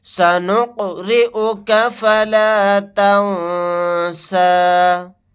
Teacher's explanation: را کے نیچے زیر ہے، را کو باریک پڑھیں گے۔ نون ساکن کے بعد سین آ گیا، یہاں پر اخفاء کا قاعدہ ہوگا۔ · یہاں پر قاف ساکن ہے، قلقلہ کر کے پڑھیں گے۔ را کے نیچے زیر ہے، را کو باریک پڑھیں گے۔